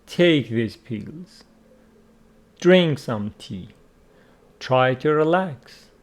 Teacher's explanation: These sentences are all imperative sentences. They start with a verb. They order you to do something. And the intonation in them is falling.